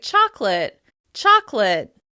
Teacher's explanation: we usually drop the schwa sound in the middle, so it sounds like chocolate, chocolate. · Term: syncope